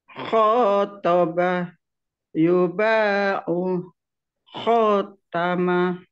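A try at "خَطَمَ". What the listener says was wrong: Kho-nya hati-hati, Bu. Kho-nya jangan sepanjang. Kho, tapi khotama.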